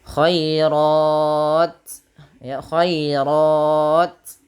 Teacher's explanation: rnya baru dibaca dengan tebal karena dia tafhim berharakat fathah. Kemudian kalau kita berhenti pada lafal r ini ada bacaan namanya mad ari di sukun. · sedikit saja dia panjangin dulu rnya khairat baru kasih hams. Ya, untuk huruf ta pertama sifat syiddahnya baru kasih hames.